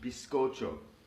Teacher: the Z always sounds like an s in American Spanish